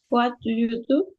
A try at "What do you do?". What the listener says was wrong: That's correct. Very good.